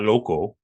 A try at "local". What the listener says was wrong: Now it sounds like you're singing loco.